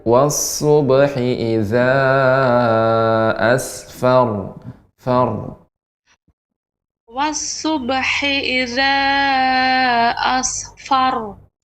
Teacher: fa-nya ditampakkan fa ya, sifatnya hamus, banyak udara, hembusan udara mengalir.